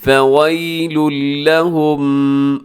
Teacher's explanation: یہاں نون کا ساؤنڈ بالکل ختم ہو جائے گا۔ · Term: ادغام